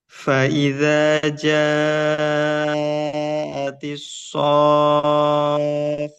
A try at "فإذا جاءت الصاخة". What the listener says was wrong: Tambah 1 harokat lagi.